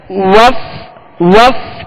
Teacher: فا کو ادا کرتے ہوئے اس کے مخرج کی طرف آئیں گے کہ اوپر کے سامنے والے 2 دانتوں کے کنارے اور نچلے ہونٹ کا تر حصہ